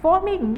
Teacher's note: a palavra formiguinha, a sílaba tônica é o gui